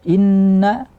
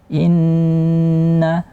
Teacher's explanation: Inna, kuatkan gunnahnya. Inna, lamakan sedikit. Jangan inna hadza, itu sering.